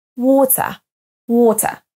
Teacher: comme un A français avec la bouche bien ouverte mais water vous pouvez aussi le prononcer à la Britannique avec un T